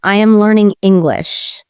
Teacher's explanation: For example, if I say, I am learning English, the stress would be on learning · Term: stressed words